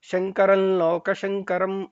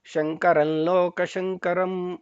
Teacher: ಹಾಗಾಗಿ ಮಕಾರ ಕೇಳಿಸ್ದಂಗೆ ಶಂಕರಲ್ಲೋಕ ಶಂಕರಂ ಅಂತ ಲಾ ಅನ್ನೋದನ್ನ ಅಲ್ಲಿ ಅಲ್ಲಿ ಲಾಗೆ ಒಂದು ಒತ್ತಕ್ಷರ ಸೇರ್ಕೊಳ್ಳುತ್ತೆ, ಮತ್ತೆ ಅದು ಅನುನಾಸಿಕವಾಗಿ ಹೇಳ್ತೀವಿ ಲಾ ಅಂತ.